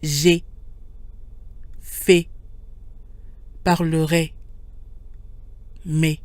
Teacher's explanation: When AI is followed by a silent consonant or comes at the end of a word, it tends to be pronounced with what we call a closed sound, E, like E with an accent aigu, E.